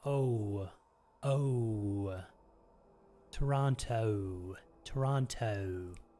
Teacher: you do a long o that ends in a w sound